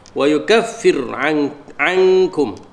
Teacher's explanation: ikhfa haqiqi, nun mati bertemu dengan kaf